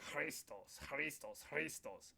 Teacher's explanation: So it's like a K and H mixed together.